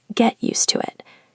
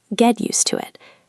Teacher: the T in get often becomes a glottal stop in British English or a flap T in American English.